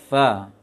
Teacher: Kemudian dalam baca fa, usahakan gigi dengan gigi ujung gigi atas dengan bagian dalam bibir bawah, sehingga anginnya tidak terlalu kuat.